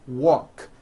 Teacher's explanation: the word walk which has an unvoiced K sound at the end